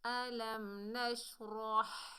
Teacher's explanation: یہ بڑی ہا ہے، یہ حلق کے درمیان سے ادا ہوتی ہے